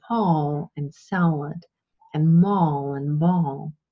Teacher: when you have the L inside of a word or at the end of a word, it's always dark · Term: dark L